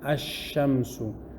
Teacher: You say shamsun, a sun, ash-shamsu, the sun. You don't hear the lam, ash-shamsu. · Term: idgham